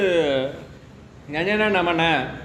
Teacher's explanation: அடுத்து மெல்லினம் நாம சொல்லும்போது நம எல்லாம் எங்க மூக்குல இருந்து வரும்